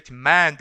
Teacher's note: demand 했을 때 강세가 어디 옵니까? 앞에는 강세가 오지 않고 뒤에 두 번째 음절에 demand 이렇게 오겠죠